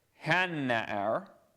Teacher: hey, pathak plus doubling the next consonant